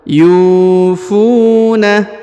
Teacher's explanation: huruf yu dibaca 2 harokat karena di depannya terdapat waw sukun atau waw mati